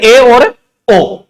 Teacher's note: जीभ तालू के निकट ना पहुंचकर थोड़ी टेढ़ हो जाती है या तो नीचे की तरफ टेढ़ी हो जाती है या ऊपर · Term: अर्ध सवत